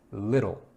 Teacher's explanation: Little has the T sound changed into a D so that you can say that a little bit smoother.